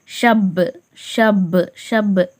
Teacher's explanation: பா கல்கலாவின் எழுத்து அசச்சு இருமுறைகள் ஓதுற மாதிரி ஓதணும்